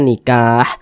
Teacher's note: kalau kita berhenti atau berwakaf tepat di huruf ha kita baca nikah Jangan dibaca nikahi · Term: Mad Arid lisukun